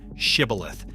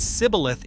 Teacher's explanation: Men from the losing tribe could not pronounce that sh sound. They said sibboleth instead